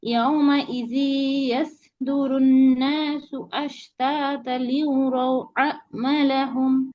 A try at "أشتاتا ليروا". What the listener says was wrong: আশতাতাল, এখানে তানবিনের পরে লাম আসছে। তানবিনের পরে লাম হচ্ছে ইদগামে বেলা গুন্না, গুন্না ছাড়া মিলাই পড়বে। তাসদীদ আসছে, আশতাতা লিউরাও না, আশতাতাল লিউরাও আমালাহুম, আশতাতা